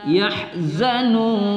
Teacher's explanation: nun kita baca agak panjang sedikit pada mad arid li sukun